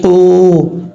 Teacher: یہاں پر واو مدہ ہے، الف مقدار لمبا کر کے پڑھیں گے، قاف حروف مستعلیہ میں سے پر پڑھا جائے گا۔